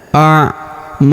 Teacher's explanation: huruf na kita panjangkan dua harakat karena terdapat alif di depannya